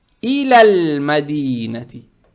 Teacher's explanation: И это говорит о том, что следующая буква, в данном случае буква мим, она лунная буква. Теперь, когда букву лам с сукуном произносим, язык тут же не надо убирать, чтобы не было иляля мадинати. Не иляля, надо читать иляль мадинати.